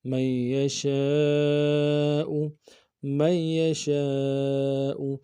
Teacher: میم کو یا کے ساتھ ملانا ہے، نون کے ساتھ نہیں ملائیں گے، یا کے اوپر تشدید زور دیں گے، اور شین کے ساتھ الف مدہ ہے، الف مدہ کے اوپر مدہ اصلی ہے، تین الف مدار میں کم سے کم کھینچیں گے، حمزہ کو نون سے ادا کریں گے۔